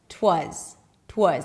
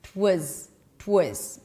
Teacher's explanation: The beginning, it was, 'twas, 'twas. The it reduces completely.